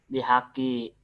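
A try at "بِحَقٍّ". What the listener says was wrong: Ki apa kin? Nah, kalau nggak ada isim yang lain sebelah kiri, ditanwinkan saja. Bihakin.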